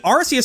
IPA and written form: 'ɑrsiəs (Arceus)